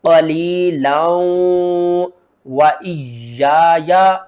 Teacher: तनवीन के बाद हरूफ यरमलून में से वाव आ रहा है, तो क्या करेंगे, लाम को वाव के साथ मिलाएंगे और साथ में गुन्ना भी करेंगे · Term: इदगाम माल गुन्ना